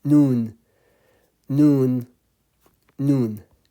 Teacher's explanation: Noon is coming from nasal as well, so only meme and noon are coming from nasal, only two letters. Noon, the tip of the tongue is touching behind, or the gum behind the front teeth.